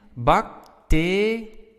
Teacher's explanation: so now our stress is on te. It's not at the end of the word, which is quite important.